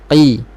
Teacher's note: Qi tebal, makhraj huruf qaf. Pangkal lidah sentuh pada langit lembut, belakang sedikit berdekatan dengan anak tekak. Qaqiqu tidak berangin kerana huruf qaf bersifat dengan lawan kepada hamsun iaitu jahrun, nafas tertahan.